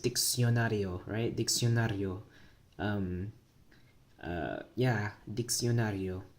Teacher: notice how I'm saying that glide, the sia